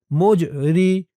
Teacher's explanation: জিমটা কলকলার হরফ ধাক্কা দিয়ে পড়তে হবে